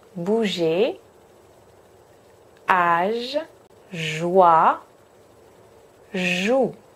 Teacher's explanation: En français, il n'y a pas de d dans le son j. Donc, attention à ne pas venir taper le palais avec votre langue.